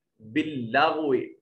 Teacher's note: غین کو بھی موٹا کیجئے